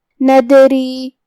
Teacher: کلمت ندری میں یہاں دال پہ جزم ہے تو ہم حکم القلقلہ کو ظاہر کریں گے